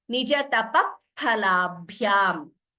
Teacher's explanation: the correct pronunciation of upadhmaniya is, we have to close the lips and there is a sudden expulsion of air